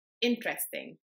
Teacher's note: when I say the English word interesting I emphasize the first syllable more than the second and the third one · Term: word stress